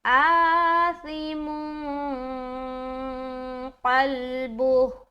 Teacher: کس چیز کو چھپاتے ہیں؟ نون کی آواز کو۔ کہاں چھپاتے ہیں؟ ناک میں۔ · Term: اخفا